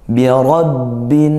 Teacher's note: huruf sin di bagian akhir, jangan lupa bahwa huruf ini memiliki kualitas mengalir, dilepaskan, dan dihembuskan. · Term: rikwah